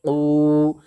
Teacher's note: क़ाफ़ के ऊपर उल्टा पेश है, उल्टा पेश बराबर होता है वाव मद्दा के, इसलिए उल्टा पेश को एक अलिफ के बराबर खींच करके अदा करेंगे।